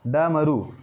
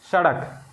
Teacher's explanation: जीवा जो है मूर्धा को छूकर झटके के साथ नीचे आ रही है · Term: द्विगुण व्यंजन